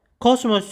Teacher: Ona görə çıxır kosmos sözündə o. O o qalındır, deməli açıqdır. Həm də dodaqlanandır.